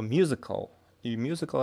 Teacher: musical это первый слог под ударением